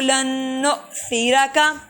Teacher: حمزہ ساکن کو جھٹکا دے کے پڑھا جاتا ہے